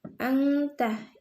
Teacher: Nun sukun bertemu huruf ta dibaca samar dan dengung. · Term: ikfa